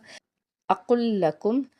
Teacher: تشدید کا سائن ہے لام کے اوپر، 2 بار اس کو ادا کریں گے۔